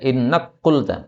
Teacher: karena kaf ketemu qaf boleh idgham